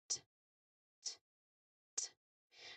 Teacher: press the tip of your tongue firmly against the gum ridge behind your top front teeth